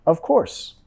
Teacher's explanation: tienes que pegar el diente de arriba, labio abajo